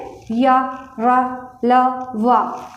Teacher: जब हम लोग इसको बोलते हैं तो इसका जो जीभ का जो अगला भाग होता है वो मसूड़ों को छूकर हवा निकल जाती है। जैसे य र ल व, ये जबान मसूड़ों को टच करती है। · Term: अंतस्थ व्यंजन